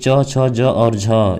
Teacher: जो कि च, छ, ज और झ ये आपके होते हैं क्या, स्पर्श संघर्षी होते हैं